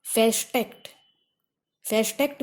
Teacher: And the next last condition is the prefixes VER and ER. Many verbs in German language have the prefix VER or ER. In such prefixes, R is not pronounced.